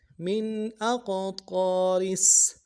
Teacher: ہے، یا اظہار ہوگا، حمزہ کو قاف کے ساتھ ملانا ہے، قاف کو موٹا کریں گے، قاف جب ساکن ہو تو قلقلہ ہوگا